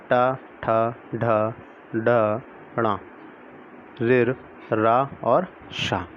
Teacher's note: मूर्धा और जीभ के स्पर्श से अतः जीभ के पतले भाग और तालु के अगले भाग से बोले जाने वाले वर्ण मूर्धन्य कहलाते हैं